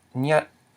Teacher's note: We have the low consonant nyat, the short vowel a, and the dead syllable t, which equals mid-tone. So when we look at this word, we know it's pronounced nyat with a mid-tone.